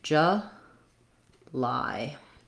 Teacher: The only thing to know about July that it may be a little bit different, then a similar word in your language is that we stress on the lie syllable. So it sounds like j, lie. · So it sounds like j, lie. Length on lie, the j is an unstressed schwa.